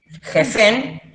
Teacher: la JS es como si tuvieran babita acá en la garganta, bien gutural